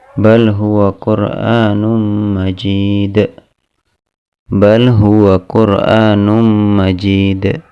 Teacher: Perhatikan di situ bal huwa, lam pada kata bal, lam sukun pada kata bal bertemu dengan huruf ha, maka dibaca dengan idhar, dibaca dengan jelas.